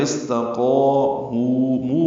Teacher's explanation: مو واو مدہ ہے تو قا اور مو دونوں کو دو حرکات لمبا کریں گے۔